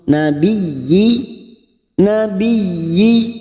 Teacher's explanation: Nabiyyina. masuk dulu pada huruf ya yang bertasdid nabi, hanya masuk tanpa ditahan lama-lama, hanya masuk nabiyyi, nabiyyi, y-nya kita panjangkan 2 harokat.